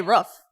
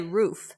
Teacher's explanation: and what do you think you say i say roof yeah i don't pronounce it that long i don't have that ooh